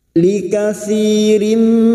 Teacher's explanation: mim wau termasuk huruf mim kasr tanwin bertemu mim Idam bunah masuk dengan mendengung masuk pada huruf berikutnya yaitu huruf mim dan mendengung selama tiga harakat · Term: idgham bi gunnah